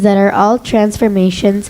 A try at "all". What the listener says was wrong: No, there's no R, all.